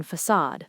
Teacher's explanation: That little tail is called a cedilla, and it tells you the C makes an S sound. The stress is on the second syllable.